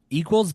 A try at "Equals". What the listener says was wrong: equals with an S.